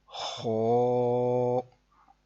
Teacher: اس کی آواز تھوڑی پر کی ہے، یعنی کہ موٹی آواز میں پڑھا ہے